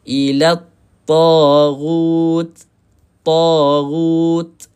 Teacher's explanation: Hujung lidah bertemu dengan gigi kacip atas. So maksudnya hujung lidah kita mesti kena sentuh dengan gigi. Kita kena rasa gigi kita baru tepat sebutan ta.